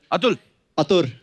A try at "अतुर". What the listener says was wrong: अतुर। अतुर। एल नहीं है, आर है।